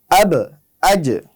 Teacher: বা এবং জিম দুটি কলকলা হরফ হওয়ার কারণে যখন এতে সাকিন হবে তখন এর উচ্চারণের সময় একটু বাউন্স খাবে